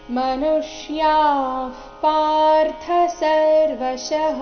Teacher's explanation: ಮನುಷ್ಯಾ ಯಾ ನಂತರ ಇರೋ ವಿಸರ್ಗದ ಉಚ್ಚಾರಣೆ ಅರ್ಧ ಫ ರೀತಿ ಬರಬೇಕು. ಮುಂದಿನ ಶಬ್ದ ಪಾರ್ಥ ಪದಿಂದ ಶುರುವಾಗ್ತಾ ಇದೆ, ಅದಕ್ಕಾಗಿ ಮನುಷ್ಯಾ ಪಾರ್ಥ ಸರ್ವಶಃ.